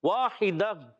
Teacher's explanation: گول تا کو وقف کی صورت میں ہا سے بدل دیں گے، گول تا کو وقف کی صورت میں ہاں سے بدل دیں گے، جی ہاں، اس کو کہتے ہیں وقف بالابدال، الہا وقف بالابدال، الہا.